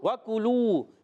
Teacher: وَکُلُوا کاف پر بھی ہونٹ گول، لام پر بھی ہونٹ گول، پھر واو آ گیا ہونٹ گول. اور کاف کو باریک رکھیں گے، کاف زبان کی جڑ تالو کے سخت حصے سے. لام وہاں پہ شلو واو مدہ ایک الف کھینچ کر ادا کریں گے.